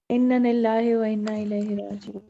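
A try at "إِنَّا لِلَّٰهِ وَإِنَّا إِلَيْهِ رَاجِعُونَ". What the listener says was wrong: कि ये इन्ना पढ़ना जो है ना थोड़ी सी मिस्टेक है। इन्ना इन्ना लंबा करें। इन्ना, बेशक हम, इन्ना लिल्लाहि व इन्ना इलैहि राजिऊन।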